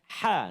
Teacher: Huruf ha terletak di rongga kerongkongan kita di tengah.